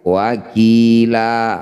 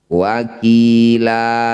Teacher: Fathah tanwin dihentikan disebut bacaan mad iwad. Bunyi fathah tanwin kita ganti jadi fathah panjang. Wakilan ketika dihentikan wakila.